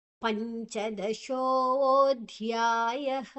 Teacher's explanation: ಪಂಚ ಪಾದ ನಂತರ ನ್ಯಕಾರ, ಅಲ್ಲಿ ಆ ಒಂದು ಅನುಸ್ವಾರದ ಉಚ್ಚಾರಣೆ ನ್ಯು, ಮುಂದಿನ ಅಕ್ಷರ ಚ ಇದೆ.